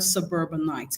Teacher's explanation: So where exactly does the stress fall in the word suburbanite? Now, the stress here actually falls on the second syllable. Now, the reason this is because the suffix ite is actually a suffix that is added to suburb, okay, to form that word.